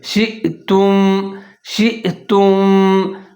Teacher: حیثو فَكُلُوا مِنْهَا حَيْثُ شِئْتُمْ، شین کے بعد حمزہ ساکن ہے تو شین اور حمزہ دونوں ملا کے پڑھیں گے اور اس کو جھٹکے کے ساتھ پڑھیں گے